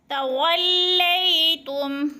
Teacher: وا کو لام کے ساتھ جب ادغام کریں گے تو جما کر یعنی سختی سے پڑھیں گے. اور لئی پہ جو ہے یا لین ہو رہا ہے، یا ساکن سے پہلے لام کے اوپر زبر ہے تو یا لین جھٹکا بھی نہیں دینا اور کھینچنا بھی نہیں ہے.